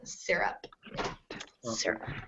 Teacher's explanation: the Y gets a short I sound in this word, syrup. You almost don't hear it because of the R